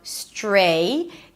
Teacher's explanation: The tr sounds sort of like a ch sound. stray. Then it's the a as in day.